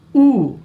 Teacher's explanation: देखो ऊ पीछे से आवाज आ रही, जीभ के पीछे भाग से